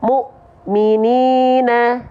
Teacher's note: huruf yang menghadapi hamzah sukun pasti terhenti atau terhentak.